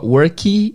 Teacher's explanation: A gente coloca esse I depois do K. Não precisava ter o I, né?